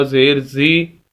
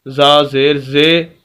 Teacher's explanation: زی کی جگہ زے پڑھے تو یہ مجہول ہوتا ہے۔